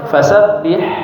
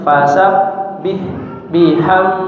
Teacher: huruf ha ya rakhawah mengalir suaranya jangan putus